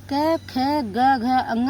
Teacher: ये सारे जितने भी वर्ण होते हैं, वह कंठ से बोले जाते हैं। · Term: क वर्ग